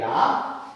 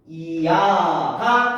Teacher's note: 야는 이야 이렇게 소리가 나죠? 앞에 이 소리가 짧게 지나간 다음에 아 소리의 유지야. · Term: 이중모음